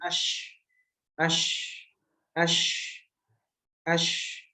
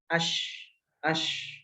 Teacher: Kemudian rokhawah. Ketika kita mengucapkan huruf shin masih ada suara yang mengalir setelah sampai pada makhraj. Ketika udara itu sudah sampai, ketika udara atau suara itu sudah sampai ke dalam makhraj, itu setelahnya masih ada sisa suara yang keluar.